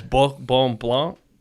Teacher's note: So the R is that guttural sort. So it's Bourbon Blanc is how I think you would say it.